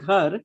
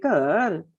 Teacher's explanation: Punjabis, for example, if they have to say ghar, they'll say kar, and they would make it into a tone.